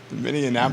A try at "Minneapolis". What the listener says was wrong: That is adding an extra, at least an extra N.